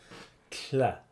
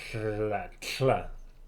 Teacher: It's like a TL. You don't finish the T, but you turn it into like a crazy fricative L thing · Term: lateral TL thing